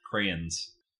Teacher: the second vowel is a schwa